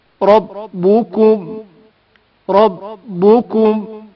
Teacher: اگر حرف را پر زبر یا پیش ہو تو تفخیم کے ساتھ پڑھا جائے گا، یعنی موٹی آواز سے پڑھا جائے گا۔ رائے مفتوح زبر والے را کو تفخیم کے ساتھ پڑھا جائے گا